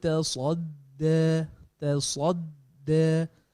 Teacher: تصدى. Sa tebal. Sama. Cuma sad tebal. Pangkal lidah naik dan terkumpul. Itbaq dia panggil.